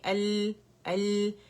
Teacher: لام سکون کے ساتھ ہے تو لام کا توسط شو کرنا ضروری ہے. تو جب اس کی ادائیگی ہوگی تو ہم کہیں گے ال، ال.